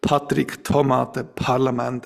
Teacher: in Swiss German, you typically don't have aspiration in that position. In Standard German, you do. · And what you see here is that in the south, you tend to have very, short VOTs. The further north you go, the more closer you come to the German border, the more you get aspirated articulations in these words.